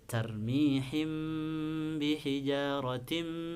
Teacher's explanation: Nah, ini mim mati bertemu ba, maka disebut ikhfa syafawi. Ikhfa syafawi dibacanya harus dengung dan panjang 2 harokat. · Nah, ini tanwin bertemu dengan mim, kasrotain bertemu dengan mim, maka disebut idgham bi gunnah. Jadi harus dimasukkan dan dikasih gunnah ya, ditahan 2 harokat.